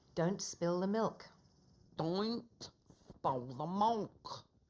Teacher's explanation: the L is only partially sounded or not at all in words like these. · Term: dark L